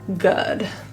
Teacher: the double O in good, is called the upsilon in IPA. It's a little bit more neutral of a protrusion.